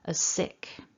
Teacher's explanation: And so what you're going to hear when people are speaking normally, if we're saying this idiom as part of our conversation, you might only hear what sounds like one S as sick. The two S's kind of can blend together in connected speech. So to be as sick.